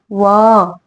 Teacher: व को हम दंत ओष्ठ की दांत और ओष्ठ दोनों की सहायता से बोलते हैं। जैसे व तो हमारी जीवा दांत को भी छूती हुई होती है और ओठ को भी ओठ भी एक दूसरे को छूते हैं। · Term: दंतोष्ठ